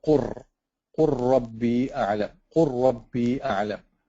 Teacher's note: So same word قُل, but because it's followed by a ra, you have to say قُر. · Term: idgham